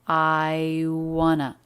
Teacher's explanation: I diphthong right into the W consonant sound.